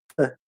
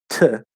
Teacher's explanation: the T is a dental T where you say th, not t, like in English